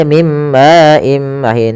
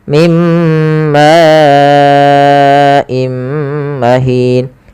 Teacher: yang datang setelah huruf mad di sini ma awalnya dua harakat karena datang setelahnya Hamzah maka ini kita panjangkan sepanjang empat harakat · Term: mad wajib muttasil